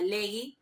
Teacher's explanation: el mecanismo de formación es por el alargamiento de la vocal radical, que es una característica de formaciones de perfecto antiguas, ¿sí?